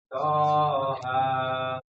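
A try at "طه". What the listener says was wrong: Kepanjangan, Pak. Toha. To-nya bersih. Toha. Yang to, tapi to.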